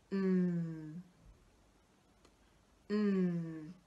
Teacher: To make the N sound, we lift the tip of the tongue up to behind our front teeth. We turn our voice on and we push the air out of our nose.